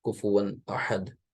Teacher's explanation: ون جو بول رہے ہیں، کفوا، یہاں پر غنہ نہیں کرنا ہے کیونکہ آگے حمزہ ہے